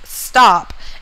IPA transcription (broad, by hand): stap